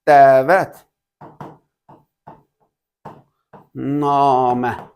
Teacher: Burda fikir versə uşaqlar, deməli dəvət namə. Deməli bu şəkildə yəni hər iki sait uzun tələffüz olunur. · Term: uzanan saitdir